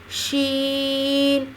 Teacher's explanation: شین پہ بھی شد ہے مضبوطی کے ساتھ اور شین کا تلفظ واضح کریں گے. زبان کے درمیان کو تالو کی طرف بلند کرتے ہوئے باریک مگر پھیلتے ہوئی آواز میں شین کی آواز آتی ہے